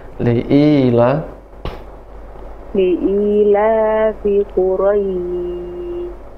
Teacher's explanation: Jangan rendah. Jadi sama, nadanya sama, rata.